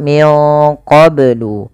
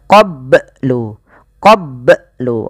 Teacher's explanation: melafal qoblu ini bnya harus dipantulkan karena ia ada bacaan qalqalah